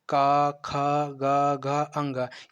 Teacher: जो हमारे स्थान कंठ है, वो ध्वनि कहाँ से निकलती है, कंठ से निकलती है।